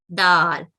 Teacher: دال زبان کی نوک کو دانتوں کے ساتھ جوڑتے ہوئے ادا کیا جاتا ہے, یہ نرمی سے ادا کی جاتی ہے